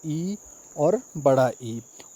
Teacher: तालव्य स्वर जो तालु से बोले जाते हैं।